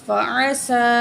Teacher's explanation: سین کے اوپر کھڑی زبر ہے تو ایک الف کے برابر کھینچ کے پڑھیں گے اور سی ڈی کی آواز نکالیں گے سین میں.